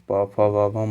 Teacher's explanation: प फ ब भ म जो है ये सभी का उच्चारण ओष्ठ से होता है